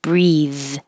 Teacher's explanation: If you see the E at the end, that makes it the verb and it makes the TH voiced